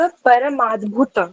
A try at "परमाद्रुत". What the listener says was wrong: परमाद्रुत, द्रुत, हाँ। ये रा भी है और ऊ भी है ना, दा पे इस वजह से। परमाद्रुत वैभवाय। हाँ, परमाद्रुत। भा कहाँ है? यहाँ पे दा लगा है ना, भा कहाँ लगा है? परमाद्रुत, द्रुत, दा भी है, रा भी है, ऊ भी है, द्रुत में आ गया।